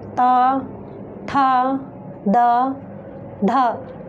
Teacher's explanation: त का उच्चारण करते समय हमारी जो जिह्वा है वो हमारे दांतों से टकरा रही है, तो इसका उच्चारण स्थान होगा दंत।